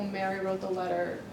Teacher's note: that's showing broad focus because nothing is exactly being focalized